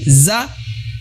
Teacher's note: Jadi dia ujung lidah tidak menyentuh gigi seri atas ya, tidak menyentuh ujung gigi seri atas. Hanya menyentuh ujung gigi seri bawah.